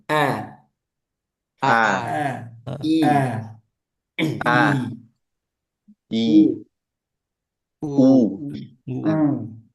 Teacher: Ini dimulai dari hamzah. Hamzahnya dikuatkan